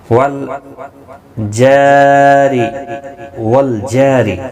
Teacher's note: والجاری، والجاری، جا الف مدہ ہے، ایک الف کی مقدار کے برابر کھینچ کر پڑھیں گے. را زیر کی وجہ سے باریک پڑھا جائے گا